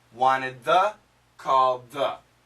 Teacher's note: when there's a d followed by a th almost always we connect into the th and just keep that